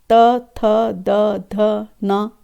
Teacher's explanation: जब इन वर्णों का उच्चारण जिह्वा करती है तो दांत के पीछे का जो भाग होता है उस पर जिह्वा स्पर्श होती है